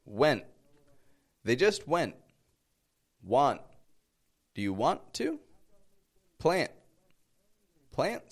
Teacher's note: when NT is found at the end of a word, we drop that T and we pronounce the N short